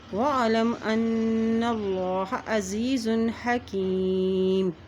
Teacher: यहाँ देखिए नून के पश्चात है यहाँ पर भी गुन्ना अदा किया जाएगा और अल्लाह के नाम से पहले ज़बर आ गया है तो अल्लाह का नाम भी यहाँ पर मोटा अदा किया जाएगा